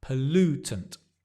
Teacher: The pol becomes p. And the stress is on the lu.